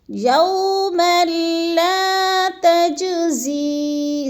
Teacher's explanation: تج پہ تھوڑا سا قلقلہ کرنا ہے کیونکہ جیم ساکن ہے اور حروف قلقلہ میں سے ہے، یعنی اس کو ہلا کے پڑھیں گے